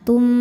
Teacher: Cara bacanya mim pertama dileburkan ke kedua ya disertai dengungan. Tum tahan. Boleh juga disebut dengan idgham mutamilain.